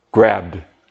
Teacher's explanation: Voiced with simple past tense, we get the D sound.